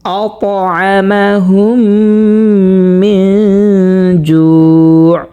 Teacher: মিম সাকিনের বামে মিম আসছে, এটা এই মিম সাকিনকে গুণনা করে পড়ব।